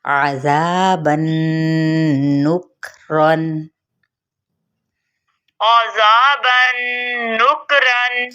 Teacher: زال نرمی کے ساتھ باریک، اور ساتھ ہی ہم نے کاف پہ ہمس بھی کرنا ہے